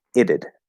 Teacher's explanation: Weighted, right? And we'll flap that T into the I so that there's actually a sound between the T and the D. So when we say it apostrophe D, it's itted, and that becomes a flapped D sound.